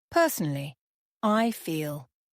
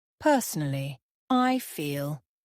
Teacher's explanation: Personally has 4 syllables with stress on the first.